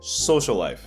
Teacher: As you can see the two L's become one L. · Social life becomes social life. As you can see, the 2 L's become 1 L. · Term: geminates